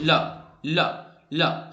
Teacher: ला बोल के देखो, ला, ला, ला हल्का सा दंत को टच करता है, लेकिन ज्यादातर लोग इसको दंत मूल मानते हैं